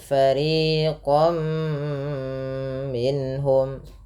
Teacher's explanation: ada tanwin bertemu dengan huruf mim. Fathatain bertemu dengan mim, yaitu bacaan idgham bi gunnah.